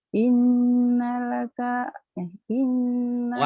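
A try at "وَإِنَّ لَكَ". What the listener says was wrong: wahnya, wahnya ketinggalan. Wahnya ketinggalan Kak.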